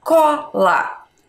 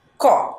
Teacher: na nossa palavra Cola a gente fala ele mais aberto mas ele não tem acento